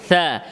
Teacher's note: জিহ্বার আগা সামনের উপরে দুই দাঁতের আগা থেকে থা উচ্চারণ করতে হবে, থা থা থা। এবং হরফটি বেশি লম্বা করা যাবে না, এক আলিফ দুই হারাকাত